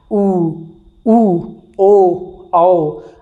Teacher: आपका मुंह अर्थात ओठ पूरा खुल रहा है, अर्थात एक वृत्त का निर्माण कर रहा है। ऊ जब तक ये बाहर नहीं निकलेगा, चोंच नहीं बनेगा, तब तक तो दोस्तों उसे वृत्तमुखी नहीं कह सकते हैं।